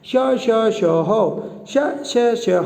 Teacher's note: बोलने में ही दोस्तों घर्षण लग रहा है, ज़्यादा हवा निकल रही मुँह से। भाई जब ये घर्षण वाले व्यंजन है तो ज़्यादा हवा निकलेगी, ऑब्वियसली क्या हो जाएंगे, महाप्राण।